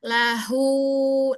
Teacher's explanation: Makhraj ha di mana? Ee di tenggorokan paling bawah. Iya. Tenggorokan bawah daerah pita suara ya.